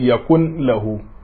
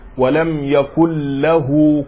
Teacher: Walam yakul lahu, kada mutum nan ya ce yakun lahu, yakullahu wato za a yi idgham nashi cikin harfin da yake gabansa shine lamun